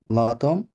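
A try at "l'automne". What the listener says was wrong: লাতম না, বাট এটা লুতন, M silent, M উচ্চারণ হয় না, লুতন, টি ও এন, হ্যাঁ, তন, লাস্টের ও সাইলেন্ট, লুতন, অটাম,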